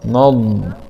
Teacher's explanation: ضاد سكون مع الاستطالة